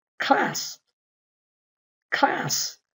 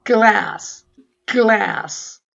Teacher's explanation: 같은 곳에서 나는데 같은 방식으로 하나는 성대에 진동이 없어 클래스, 하나는 성대에 진동이 있어서 글래스.